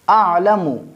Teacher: جو عین ہے یہاں پہ ہم اس کو حلق کے درمیانی حصہ سے ادا کریں گے